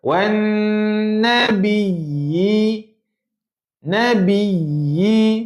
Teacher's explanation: Jangan confuse dengung dengar tekan. Sabdu memang kena tekan tapi bukan dengung.